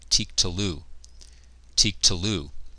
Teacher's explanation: The vocalic ending here is a shurek, and so again, vocalic ending, the theme vowel reduces to a vocal schwa